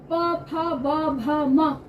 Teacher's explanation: प बोलने के लिए प दोनों लिप्स मिलते हैं आपस में · दोनों होठों को स्पर्श करके ही आवाज को बाहर लेकर आएंगे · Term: प वर्ग, ओष्ठ